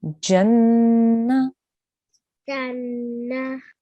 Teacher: Make sure when you say the na, we don't hear a ha sound at the end.